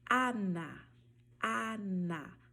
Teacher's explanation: O som da letra A, que nós chamamos de La A, sempre vai ser aberto. Então, ao pronunciar, por exemplo, a palavra Ana, você vai falar Ana, Ana.